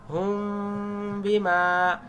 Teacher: মিম সাকিনের ইকফা, এটাকে বলে ইকফা শাফাবি, ঠোঁট দিয়ে হালকা করে ধরতে হয়। হুম বিমা, হুম হুম ঠোঁট দিয়ে ধরবেন।